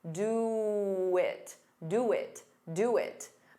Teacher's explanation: To get rid of that pause, you can add a very soft W.